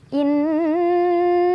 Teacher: gunnah ya gunah musyaddadah karena ada Nun yang bertasydid cara bacanya nunnya dibaca dengan dengung ditahan dulu sampai kerasa ke hidung baru dilepas